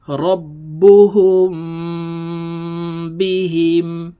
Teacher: হয় তো এই মিম সাকিনের পরে যখন এই বা আসবে তখন এই মিম সাকিনকে দুই ঠোঁটের মাঝে সুতা পরিমাণ ফাঁকা রেখে গুন্নার সহিত পড়তে হবে